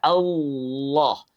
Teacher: sesuai dengan harakat fathah yaitu membuka mulut kita Allah bukan memonyongkannya